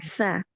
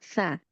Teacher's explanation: Huruf sa ini ujung lidahnya bertemu dengan ujung gigi seri atas sehingga lidahnya harus terjulur keluar.